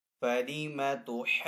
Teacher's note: الف مدہ کے بعد جیم کے اوپر یہاں پہ جو تشدید کا سائن ہے اس کو سکون اصلی بھی کہتے ہیں، تو الف مدہ کے بعد سکون اصلی آنے کی وجہ سے اب یہاں پہ جو مد ہوگی وہ مد لازم ہوگی۔ مد لازم کو بھی 3 سے 4 سیکنڈ کھینچ کر ادا کریں گے۔